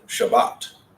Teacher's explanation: book they teach from a Sephardic point of view that means the emphasis is going to be on the last syllable of the word · So, Shabbat, our emphasis is on the bat, not on the shah.